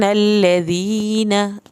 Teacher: नून की शत पे एक अलिफ के बराबर देर लगाएंगे